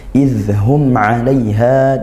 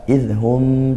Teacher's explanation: Idzum alaiha bukan juga idhum. Tidak sampai dengung karena tidak idgham ataupun ikhfa